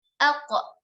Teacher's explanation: Sedangkan qaf, alqa memantul pada pangkal lidah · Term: qalqalah